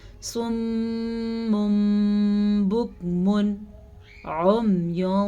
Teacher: یہاں پہ ہمارے پاس تنوین ہے، دو زبر دو زیر دو پیش کو تنوین کہتے ہیں. تو تنوین میم میں بدل جائے گا تو ہم من کے بجائے مم پڑھیں گے، ٹھیک ہے، اور غننے کے ساتھ پڑھیں گے.